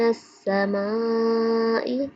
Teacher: سین جو ہے ہمیشہ سیٹی کی آواز دیتا ہے